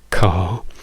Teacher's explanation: in inglese noi non pronunciamo la r, quindi non diremmo car, diremmo ca